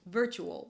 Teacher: although there is a T here, it's pronounced as Ch as a ch